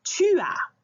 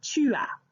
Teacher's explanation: we do not pronounce the last consonant, the S.